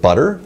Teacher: You could maybe have a tap or a flap in there, like in the word butter